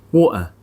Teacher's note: pronounces water as water, where the t sound is replaced by a glottal stop.